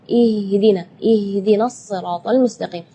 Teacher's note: Sedangkan makhraj huruf H itu adalah dari tenggorokan. Jadi keluarnya tipis karena H itu termasuk huruf di antara 28 huruf hijaiyah yang paling lemah adalah huruf H.